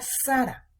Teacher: La palabra Sara, la sílaba tónica es sa. Última sílaba hará, penúltima sílaba sa.